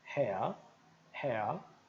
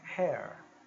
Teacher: for britânico vou dizer ha ha para cabelo né ha mas se eu for americano eu vou até o r